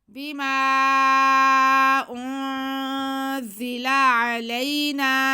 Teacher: نون پہ زبر ہے اور ساتھ میں الف ہے تو یہ الف مدہ ہو گیا. نون کی آواز کو ہم کھینچیں گے